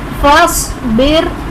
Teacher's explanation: صاد حرف مستعلیہ پر کریں گے. را ساکن سے پہلے زیر اصلی اسی کلمے میں ہے تو اس لیے را کو باریک پڑھیں گے